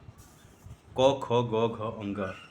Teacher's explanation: ये सब जो है कोमल तालव्य ध्वनियाँ हैं जिनको कंठ से बोला जाता है। जब भी आप क का उच्चारण करें, ख का उच्चारण करें, ग का उच्चारण करें, घ का उच्चारण करें अथवा अंग का उच्चारण करें तो ऐसा लगता है कि ध्वनि आपके कंठ से होकर के आ रही हो।